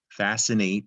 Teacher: And in this example, it seems like fascinate should be spelled with 2 S's. You don't hear the C. Fascinate, it's got an E at the end.